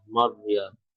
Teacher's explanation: র এখানে মোটা, জবরের পরে র সুকুন হয়েছে, মোটা হয়